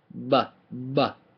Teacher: the B is a little more prominent but it's not popped it's just bbbbb right you hear the the lips more B